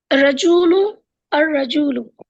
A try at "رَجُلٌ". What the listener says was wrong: دیکھیے الف لام نہیں ہے جس میں، اس میں تنوین پڑھنی ہے، رجلن، رجلن، اور جس میں الف لام ہے اس میں تنوین، ہاں اس میں تنوین نہیں پڑھنی، الرجل، بس۔ پڑھیے پھر سے۔ ہاں رجل، الرجل۔ چلیے آگے پڑھیے بھائی ابو طلحہ۔